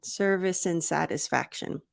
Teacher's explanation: I reduce the D and I make a smaller mouth sound for the a